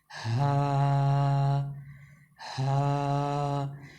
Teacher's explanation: یہ جو ہا ہے دو آنکھوں والی، اس کی آواز کو بالکل سینے کی طرف سے نکالا جاتا ہے۔ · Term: ہا دو آنکھوں والی